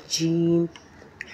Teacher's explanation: ज़बान के दरमियानी हिस्से को तालू से चिमटा कर अदा होता है जीम